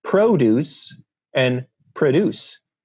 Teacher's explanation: when for example the o in produce is unstressed that it alternates with schwa and that schwa is just a um allophone an alternate version